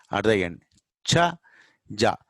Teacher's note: And the place of articulation is palatal, backward. Okay, where sha, ja is pronounced, the same place, cha, ja is also pronounced.